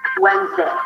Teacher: make sure to go through the diphthong of the A as in day. Imagine like you have a little Y sound at the end.